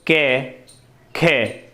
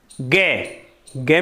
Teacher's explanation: गे, गे में ज़्यादा कंपन होता है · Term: सघोष